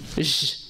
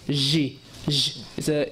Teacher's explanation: It's very close to a sheen. So you can hear the tafashi, the spreading of the sound.